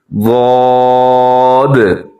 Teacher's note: اس کا مخرج یہ ہے کہ زبان کی جو سائیڈ ہوتی ہے وہ اوپر کی داڑھوں کے ساتھ لگتی ہے، تو اس سے یہ حرف ادا ہوتا ہے۔ · کوشش کریں ہونٹ گول نہ ہو اور یہ حرف بھی موٹا پڑا جائے گا